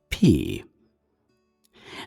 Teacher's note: Note it is an aspirated P, not a F.